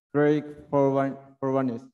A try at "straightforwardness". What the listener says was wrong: No. Straightforwardness. Jadi kayak kamu pronunciation-nya tuh ditarik gitu loh kata-katanya itu. Jadi semua kata tuh nggak terdengar jelas sebenarnya. Nggak jelas kata-katamu itu.